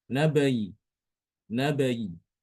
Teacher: dia mengucapkan huruf ya ini dengan kasrah tapi kasrahnya tidak dibaca sempurna hanya sepertiga aja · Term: rom